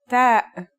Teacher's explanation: you should release your breath with a strong burst of air